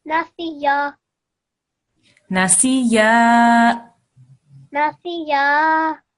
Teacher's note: make sure na, si, and then 2 seconds for the ya